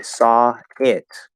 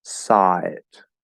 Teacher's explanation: we're going from ah to eh, and there's nothing in between. I just move my tongue into the second position. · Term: a flow